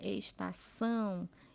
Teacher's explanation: a sílaba mais forte está na última sílaba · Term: oxítona, sílaba tônica